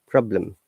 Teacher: we're stressing on prob, then lem, problem